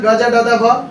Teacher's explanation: কারণ এই বর্ণগুলো উচ্চারণ করতে আমাদের কম শ্বাসবায়ু প্রয়োজন হয়, তাই অল্প প্রাণ।